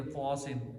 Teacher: میر سواد, اب سواد ہے نا, میر سوادن, اب الف سے پہلے زبر ہے تو یہاں موٹا نکلے گا الف. پھر طاسن, الف سے پہلے طا ہے اس لیے وہ موٹا نکلے گا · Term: الف کا موٹا